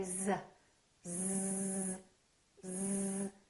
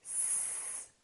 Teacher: Do you feel a vibration on your vocal cords? You do. That's because Z is a voiced sound. We're using our vocal cords.